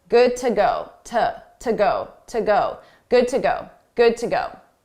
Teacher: to is a reduced sound, an unstressed sound